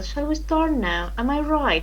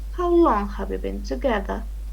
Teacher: yes no questions have rising intonation while information questions have fallen intonation